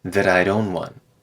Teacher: Now the T at the end of that turns into a tap, that I'd own one.